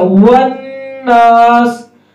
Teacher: واو میں ہونٹ گول ہوں گے کیونکہ یہ واو پہ ہمیشہ ہونٹ گول ہوتے ہیں